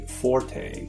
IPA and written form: ˈfɔr teɪ (forte)